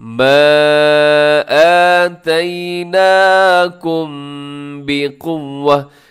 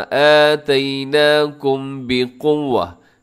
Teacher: मैंने आवाज़ को थोड़ा सा क्या किया है कि यहाँ पर इख्फा किया है, नाक में आवाज़ को लेकर गया हूँ, छुपाया है इसको। उसकी वजह यह है कि जब भी मीम साकिन के बाद बा आ जाए आपने आवाज़ को नाक में छुपाना है, ज़रूरी है। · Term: इख्फाए शफवी